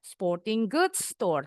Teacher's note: Sporting goods ini akhirannya bunyinya G nyambung. Goods akhirannya S store depannya S disambung juga.